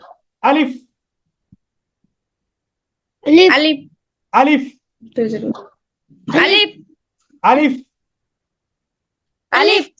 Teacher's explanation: আলিফটা মুখের খালি জায়গা হইতে উচ্চারিত হবে